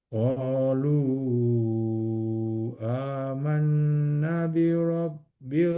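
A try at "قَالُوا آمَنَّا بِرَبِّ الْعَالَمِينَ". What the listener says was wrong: Nah, panjang. Amanna, panjang 2 harakat.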